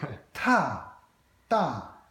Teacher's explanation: you're exploding a lot of air out of your mouth, and that sort of makes the aspiration and difference